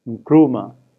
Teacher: the first consonant, which is a pre-nasalized stop, a k, which is pre-nasalized with a ng